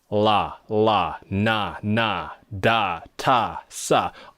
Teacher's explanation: they are all produced by touching the tip of your tongue to the alveolar Ridge behind the teeth none of these consonants even involve the teeth in any way